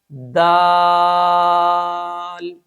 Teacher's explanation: सिफते जहर की वजह से इस हर्फ की आवाज में बुलंदी होगी।